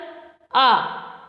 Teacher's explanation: जिसको बोलने में पूरा मुंह खुलता है, तो यह विवर्त स्वर कहलाता है